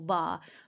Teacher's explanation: جیسے مثال کے طور پہ اگر آپ با پڑھ رہے ہو، با، تو اب با، آپ دونوں ہونٹ آپ کے اوپر اور نیچے کے دونوں ہونٹ آپ کے قریب آ رہے ہیں اور آپس میں مل رہے ہیں، ہونٹوں کو ملانے سے ادا ہو رہا ہے